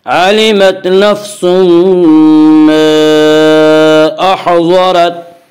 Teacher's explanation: अलिमत नफ्सुम मा में इदगाम बिलगुन्ना होगा।